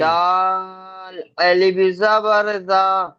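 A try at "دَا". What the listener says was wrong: না ভাই না, দালের পরে আলিফ নেই।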